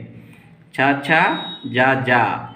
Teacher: अंगों के समीप रहने के कारण संघर्ष करती हुई निकले। ऐसे वर्णों को स्पर्श संघर्षी कहते हैं।